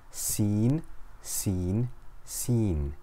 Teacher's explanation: makes a whistling s sound like the hissing of a snake